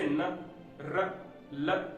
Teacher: ठीक है, इसके बाद वर्त्स्य व्यंजन। जिन ध्वनियों का उद्भव जीभ के द्वारा वर्त्स या ऊपरी मसूड़े के स्पर्श से होता है, तो उसे वर्त्स्य व्यंजन कहते हैं।